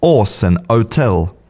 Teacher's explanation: In a lot of British dialects, the H is not pronounced in words like horse and hotel. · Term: drop your H